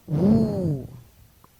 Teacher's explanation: round the lips lightly raise the back of the tongue high in the mouth as for ooh expel the breath through the small opening between the lips producing a voiced sound the obstruction is incomplete while the release is gradual take note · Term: continuant